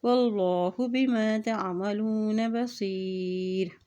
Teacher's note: अल्लाह के नाम से पहले ज़बर है तो यहाँ अल्लाह का नाम मोटा अदा किया जाएगा